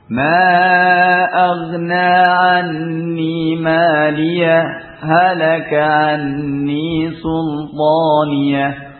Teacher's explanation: Kalau diwasalkan dengan apa ee diam sejenak, yaitu dengan kita mengucapkan maliah ee kemudian diam sejenak tanpa nafas baru kemudian kita mengucapkan halaka sultani dengan waktu yang kurang dari dua harakat. Karena kalau sampai dua harakat ini juga enggak kuat ya. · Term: saktah